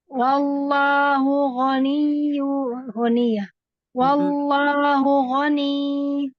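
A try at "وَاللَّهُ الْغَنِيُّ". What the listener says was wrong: Jangan dipanjangkan jadi mat. Tapi ini berhentinya tuh kayak NIYY.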